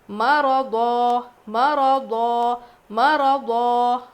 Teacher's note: را بھی موٹا، ضاد بھی موٹا